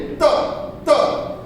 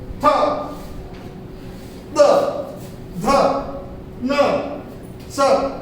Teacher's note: दांतों से हमारी जुबान टकराती है तब इनकी आवाज आती है।